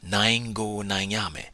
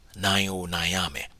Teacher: In real life speech, the particle go is often voiced as o, especially when the preceding word is an open vowel like nine.